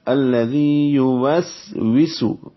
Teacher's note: واو دونوں واو ہیں، دونوں ہونٹوں کی گلائی سے، دونوں سین ہیں، دونوں سیٹی جیسی آواز سے